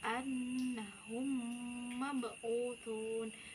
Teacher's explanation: memasukkan huruf mim sukun ke dalam mim kedepannya atau biasa disebut dengan mentasydidkan dan mendengungkan bacaan serta ditahan 2 harokat yaitu pada bibir atas dan pada bibir bawah. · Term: idgham mutamasilain